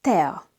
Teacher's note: We have to pronounce E and A separately, not together like in English.